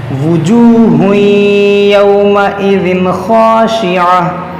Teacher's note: تنوین کے بعد یا ہے, یہاں پر ادغام ہوگا, پھر تنوین کے بعد خا ہے, یہاں پر اظہار ہوگا